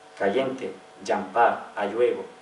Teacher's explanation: Palatalización de L, sobre todo en posición inicial de la palabra.